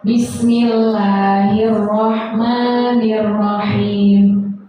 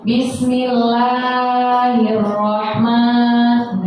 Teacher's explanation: Itu Bismillahirrahmanirrahim itu cuma 2 harokat, nggak boleh kita lebih-lebihkan jadi panjang banget, nggak. Jadi cukup aja Bismillahirrahmanirrahim.